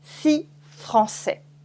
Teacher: So on its own, tout seul, on its own, 6 is six, six, okay? If you have une consonne after it, you remove the S at the end, so we just say si.